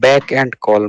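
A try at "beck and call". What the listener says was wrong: না না বিএসি কে নয় কিন্তু, ব্যাক নয় কিন্তু, বিইসি কে, বেক and কল। হ্যাঁ বেক মানে কিরকম যদি হয় সেটা ইংলিশে উচ্চারণটা না হয়ে বিই কে বেক হয় না, ঠিক সেরকম মানে ডাবল ই কে হতো তখন তাহলে বিক হতো, কিন্তু এটা হলো বিই কে তাহলে বেক হচ্ছে, হ্যাঁ।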